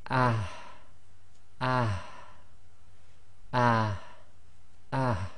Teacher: It's the ha that comes right from the bottom of the throat. Now this one's very difficult because what you've got to do with, especially with the sakin version of this, is bring the sound out but not bring the air right out. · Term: soft ha